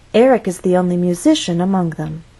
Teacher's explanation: what's the final content word giving new information musician with stress on the middle syllable again our voice must go up before it goes down so · There are more unstressed words following, so our voice will either continue to go down or at least stay at that low pitch until the end of the statement.